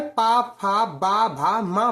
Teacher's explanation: जब आप पा बोलेंगे तो आप देखेंगे आपके जो होंठ हैं वो चपक रहे हैं। आप बिना होंठों को चपकाए पा, फा, बा, भा, मा बोल ही नहीं सकते। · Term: ओष्ठ